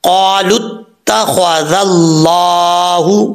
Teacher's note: یہاں پر اللہ کے لام سے پہلے زبر ہے تو اس لیے اللہ کے لام کو پر پڑھیں گے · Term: موٹا